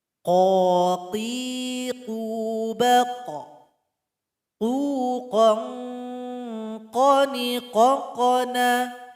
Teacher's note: Setelah itu ada suara yang naik ke langit-langit kita. Jadi dia punya sifat isti'la. Kemudian ketika sukun ada pantulan yang terasa, namanya qalqalah.